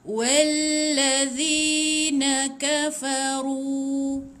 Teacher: Okey, ru ada waw. Ru ada waw ni panjang dua harakat.